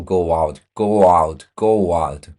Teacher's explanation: if it's vowel to vowel, we can use some sounds that it's going to be sound very light like a W sound